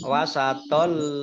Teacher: Idgham masuk, bi dengan la tidak, gunnah mendengung. Masuk dengan tidak mendengung. Tapi lamnya dibaca double, ada tasdidnya. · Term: idgham bila gunnah